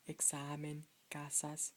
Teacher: the accent is on the penultimate syllable